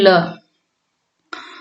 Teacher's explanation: वायु पार्श्व आसपास से निकल जाती है, वे पार्श्विक हैं